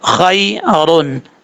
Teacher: باللذی، ہا پیش ہو، واو زبر وا، ہوا، خا یا زبر خوئی، راد و پشرن، خیرن۔ خا حروف مستعلیہ میں سے پر پڑھا جائے گا، یہاں پر جو یا ہے یا لین ہے، یا مدہ نہیں ہے۔